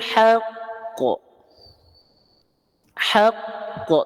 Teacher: ada hukum Qalqalah yang lebih lebih e kuat namanya qqalah Akbar tasdid itu artinya apa ditekan maka tekan dulu baru lempar bunyi